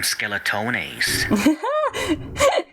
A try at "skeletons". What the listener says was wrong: You're pronouncing it like rigatone.